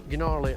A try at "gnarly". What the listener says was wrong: Did you pronounce the G on gnarly? Did you pronounce the G on gnarly?